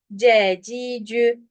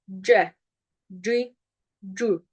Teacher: ince okuyacağım ama ötre halinde Türkçedeki ü sesi değil arkadaşlar